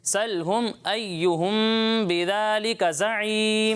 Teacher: ایہم یہاں ٹھہر کر غنہ کریں